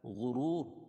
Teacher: غین کو موٹا پڑھیں گے حروف مستعلیہ میں سے۔ واو ساکن سے پہلے پیش ہو تو وہ مدہ ہوتا ہے، اور یہ دوسری جو را ہے اس پر جزم لے کر آئیں گے وقفہ کی صورت میں۔